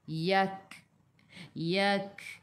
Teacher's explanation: Yak. Kaf sifat hurufnya hamas kena ada sedikit sahaja angin. Sedikit sahaja angin. Jangan banyak.